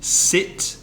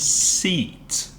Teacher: the I sound, as in the verb to hit or sit, I, and a longer sound that's E.